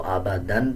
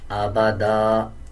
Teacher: 2 زبر کے بعد جب الف آ رہا ہو وقف کرتے ہوئے ایک زبر پڑھتے ہیں اور ایک زبر سائلنٹ کر دیتے ہیں. اب اس پہ اگر ہم وقف نہیں کریں گے تو آبادن پڑھا جائے گا، اور جب وقف کریں گے تو آبادا اس طرح پڑھا جائے گا